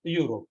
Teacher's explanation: it is actually starting with the sound y it is a consonant